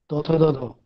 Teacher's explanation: जब जब आपकी जीभ दांत से लगी हो तो ये दंत ध्वनि कहलाती है